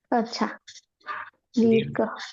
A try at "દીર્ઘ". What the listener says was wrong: ધ ક્યાંથી આવે? દીર્ઘ ના દીર્ઘ પણ ઘ કોને કહેવાય ને ધ કોને કહેવાય?